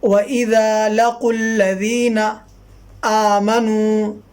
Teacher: یہ واو سائلنٹ رہے گا، الف بھی سائلنٹ رہے گا، یہ دونوں الف سائلنٹ رہیں گے، واو بھی سائلنٹ رہے گا، قاف لام میں ملے گا